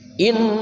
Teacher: Nun yang dibaca dengung karena ada tasydid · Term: nun gunnah musyaddadah